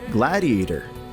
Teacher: the T from gladiator turns into a D sound, like this, gladiator.